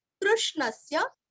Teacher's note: कृ और श्न के ऊपर आघात